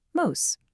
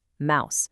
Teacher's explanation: But during the great vowel shift, that long ooh sound moved up in the mouth and became the owl sound we have today